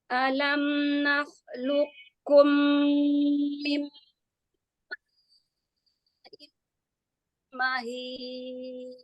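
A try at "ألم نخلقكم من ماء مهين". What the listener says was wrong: Ya, agak hilang suaranya ya. Hamzah di awal berharokat fathah, buka A-nya. A, jelaskan. Alam. Jadi jangan nggak jelas harokat fathah di awal. Alam nakhluqkum mim ma'im mahin. Ya, jadi buka ya, harokat-harokat fathahnya dibuka, dijelaskan. Setiap huruf jelaskan berserta harokatnya, baik itu fathah, kasroh, dhammah, maka dijelaskan.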